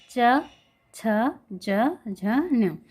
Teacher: ये तालु से टकराते हैं, तालु से स्पर्श होकर बाहर निकल रही है अपनी साउंड, इसलिए इन्हें तालव्य व्यंजन कहा जाता है।